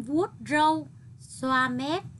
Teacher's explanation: nhấn giọng ở từ vuốt râu